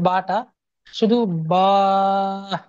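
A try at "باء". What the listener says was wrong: শেষে আপনার হা শেষে আপনার হা উচ্চারণ হয়ে যাচ্ছে। বা।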